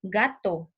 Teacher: la lengua entra en contacto con el velo del paladar